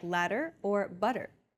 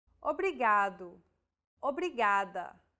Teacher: think of the quick tapping motion your tongue makes as it strikes the top gum Ridge